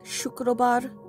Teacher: the S is pronounced as a sh or sh sound